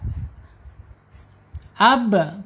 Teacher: ba asyafatain secara makhraj kemudian secara sifat asyidah tertahannya suara